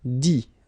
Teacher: you don't pronounce the final T.